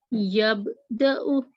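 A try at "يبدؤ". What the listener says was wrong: ये कलकला करें सही तरह।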